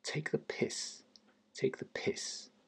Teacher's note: The stress is on the piss part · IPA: /ˌteɪk.ðəˈpɪs/